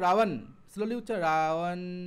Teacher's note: দেখো ঠোঁট দুটো না লাগলেও চলছে, ওটা অন্তস্থ ওয়া।